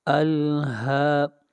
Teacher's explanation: یہاں پر ہا کے اوپر کھڑی زبر ہے، ہا کو 1 الف کے برابر کھینچ کر پڑھیں گے